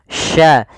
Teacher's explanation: cara pelafalannya dari tengah lidah kita, karena makhrajnya dari tengah lidah